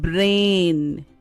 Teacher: understand the difference between consonant blend and diagraphs BR a brain in consonant blend we can hear the individual sounds like B and R are clearly heard